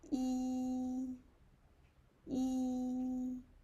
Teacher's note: It's high and long and flat. · Just uh raise your pitch to the highest highest level. It's here. Okay. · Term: first tone